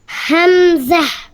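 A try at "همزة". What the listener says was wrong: না, হামজা না, ওই যে আমরা ই করে বলছি না গম্ভীর আওয়াজে সিংহের মতন গোল হা, সেটা দিয়ে বলতে হবে হামজা, ঠিক আছে, গম্ভীর করে। হ্যাঁ, যেন সবাই ভয় পায়, হামজা।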